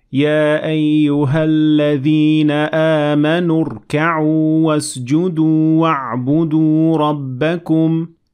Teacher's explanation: Well, that shouldn't be a problem because Hamzat Wasl has this sign, which is a small sad and stands for the word wasl, and it means connect, which means that if I continue on reading, I won't have to pronounce Hamzat Wasl anyway